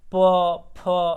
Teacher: हवा जो है हमको हमारे ओठ को स्पर्श करके निकलेगा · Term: ओष्ठ